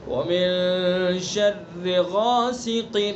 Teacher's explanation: جب تک الف ادا نہ ہو جائے، جب تک اسی طرح سے منہ بھر کے آواز کو جاری رکھنا ہے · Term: غین